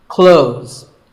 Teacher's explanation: When we say clothes, the TH in the middle can often be silent.